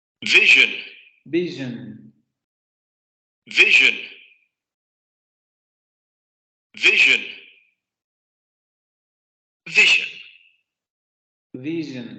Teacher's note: Vibración de cuerdas vocales. La punta de la lengua sube hacia la parte postalveolar para producir el momento fricativo. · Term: Postalveolar fricativo sonoro